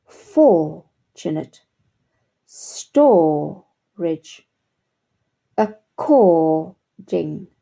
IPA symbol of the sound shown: ɔː